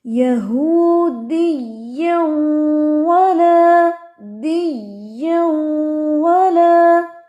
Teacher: یا کی تشدید جو ہے اس کو سٹریس دینا تھا ہم نے